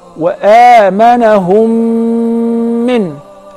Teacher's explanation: That is the letter mim. So if the first mim is non-vowel or sakinah, followed by a voweled mim, so I will merge the first in the letter and I will pronounce them as one